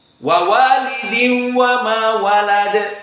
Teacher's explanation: Maka tidak ada harakatan, hanya masuk nun tanwin kepada waw, itu saja. Jadi makhrajnya tetap waw, tidak dari makhraj khaysum. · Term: idgham bi ghairi gunnah